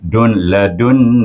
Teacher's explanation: hendaklah dibaca dengan gunah dua harakat